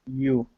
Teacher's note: remember, the Y sound is going to feel like an E. It's going to be E-U, you. You. Okay.